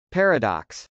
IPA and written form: pˈɛrəd.ɑks (paradox)